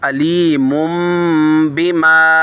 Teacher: यहाँ पर इकलाब का कायदा हो जाएगा, छोटी मीम से बदलकर इसमें इख्फ़ा करेंगे, गुन्ना करेंगे।